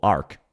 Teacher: she slightly emphasizes the R, even though she gets the K completely correct